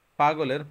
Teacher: পাগলের প টা হচ্ছে ঠোঁট থেকে বের হয়েছে সেজন্য এটা হচ্ছে অষ্ঠ ব্যঞ্জন আর গ টা হচ্ছে কণ্ঠ থেকে বের হয় কণ্ঠ ব্যঞ্জন ল